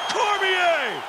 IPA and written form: ˈkɒrmɪeɪ (Cormier)